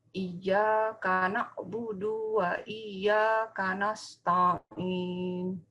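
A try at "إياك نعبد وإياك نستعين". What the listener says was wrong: Tolong Ibu, du-nya ya. Du-nya di pendek, Bu ya. Du-nya pendek, Bu. Iyyaka na'budu wa. Du-nya pendek.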